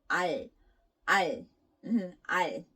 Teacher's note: 리을 was neither L nor R, so it was kind of in between sound